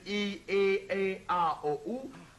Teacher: si vous prononcez dans l'ordre ces différentes voyelles I, E, A, O, U, vous constatez que la langue se soulève de plus en plus loin dans la bouche, tandis que les commissures des lèvres se rapprochent de plus en plus.